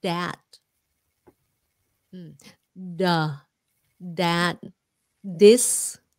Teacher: they turn the th into a d sound when they shouldn't